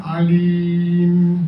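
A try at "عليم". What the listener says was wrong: alim. Jangan saya nampak macam nak bunyi ke hidung je. Alim. Tadi kan alim.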